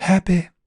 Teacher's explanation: something like this happy because he's using an old-fashioned vowel system in the olden days of proper BBC pronunciation the ending was more open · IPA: [ˈhæpɪ]